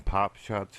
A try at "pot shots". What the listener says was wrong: You said pop shots. You didn't even say pot shots.